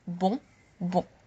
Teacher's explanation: You probably noticed that the nasal vowel is actually repeated. Bon, bon. O-N, O-N.